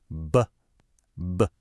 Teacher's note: Feel that little vibration, that buzz. That's a voiced sound. Your voice box is on.